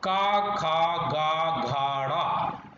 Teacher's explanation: स्पर्श वर्ण जो कंठ से उच्चारित किए जाते हैं